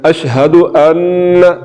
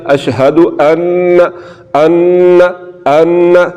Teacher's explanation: اوپر شد ہے تو یہاں پر یہ نون مشدد ہے، تو نون مشدد کو ہم نے غنہ کر کے پڑھنا ہے، اشہد ان، ناک میں آواز آ رہی ہے ، اشہد ان ان ان، تو یہ نون مشدد ہو گیا۔